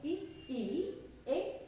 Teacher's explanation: अग्रस्वर क्योंकि जीभ के आधार पर आगे बोले जाने वाले स्वर है